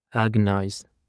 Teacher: the stress on the first syllable